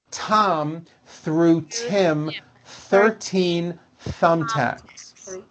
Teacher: don't forget to stick your tongue out between your teeth and be sure to make a loud air friction sound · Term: th sound